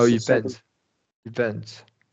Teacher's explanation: primary stress comes on the second syllable